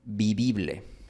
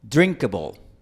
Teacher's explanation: Esa era la palabra que él quiso pronunciar, pero como en quichua no existe una distinción entre las vocales i, e, él no hace esta distinción cuando habla español